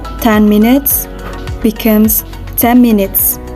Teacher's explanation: the sound n became m under the influence of a labial consonant that follows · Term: regressive assimilation